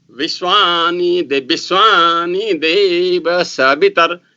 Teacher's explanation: So there are in Vishwa there are 2 vas, but the first va is pronounced as ba, while the second va is pronounced as va. Both are bilabial. None of the words in Vishwa of Nepali Pandits or the Pandits of North Indian Pandits pronounce it labiodental.